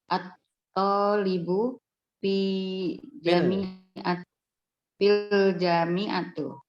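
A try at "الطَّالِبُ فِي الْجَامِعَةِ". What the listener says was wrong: Jami'ati. Fil Janya panjang, Bu. Fil jami'ati. Nah, at-talibu fil jami'ati.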